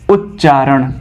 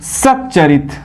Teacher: जब त के बाद च अथवा छ हो तो त का जो है कि च हो जाता है। यानी कि हम त के जगह पर जो है कि आधा च जोड़ देते हैं, जैसे उत्धन चारण। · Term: त संबंधी नियम